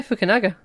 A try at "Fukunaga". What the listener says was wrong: Okay, that you said Fukunaga, I'm pretty sure, but... You did put a W in there.